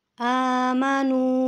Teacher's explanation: قوف کو آپ جب بھی پڑھیں گے جس کے اوپر دو نقطے ہوتے ہیں، اس والے قوف کو آپ ہمیشہ موٹا پڑھیں گے، اس والے کاف کو آپ باریک پڑھیں گے، ٹھیک ہے۔ آمنو، اب آمنو کو ہم نے تھوڑا سا لمبا کرنا ہے، کیونکہ حمزہ کے اوپر کھڑی حرکات ہے